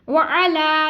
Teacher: लाम के ऊपर खड़ा ज़बर है इसलिए हम इसको खींच रहे हैं।